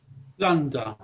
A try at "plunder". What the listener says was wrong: Plunder. Very good.